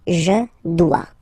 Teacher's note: O-E, when you combine the two, you get the sound wa-wa-wa.